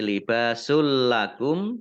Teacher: bertemu dengan huruf lam bacaan idghom bilagunnah mendengung jadi libasul lakum tidak mendengung tapi lamnya dibaca dobel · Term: idgham bila gunnah